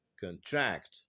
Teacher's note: هنا الستريس كانت على المقطع الاول، لكن في لما تستخدم كفعل باسمها contract the stress is on the second syllable